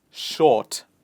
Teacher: in the word short, we do not pronounce the R sound